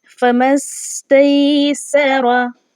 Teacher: सीन की जो आवाज़ है उसको हमने सीटी की आवाज़ की तरह से निकालना है।